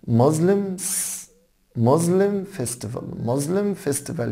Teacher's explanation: خلي بالكوا حبايبي ان الاس هنا زه ساوند، يعني نطقها زه نوت س